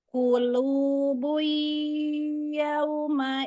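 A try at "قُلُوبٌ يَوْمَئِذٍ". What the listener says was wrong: belum masuk ke hidung tapi coba lagi ya. Tekan ke hidungnya. Itu tadi jadi kan ini durasi guna. Nah, ya, waktu di awal sampai setengahnya belum masuk hidung. Nah, setelahnya lagi masuk hidung.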